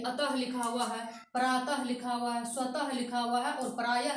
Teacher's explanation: इसको दर्शाने के लिए अ के साथ लाया गया है, लेकिन ये स्वर नहीं है। और ये विसर्ग का उच्चारण ह निकल के आता है।